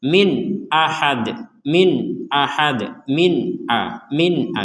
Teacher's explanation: Jadi tidak ada samar, tidak ada dengung. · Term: dibaca dengan jelas